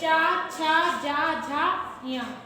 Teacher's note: जब इसे हम बोलते हैं जीभ और तलवा एक साथ लगता है